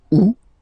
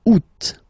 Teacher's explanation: two options are acceptable in French. The first one, you don't pronounce the final T. Ou. Second one, you pronounce it août.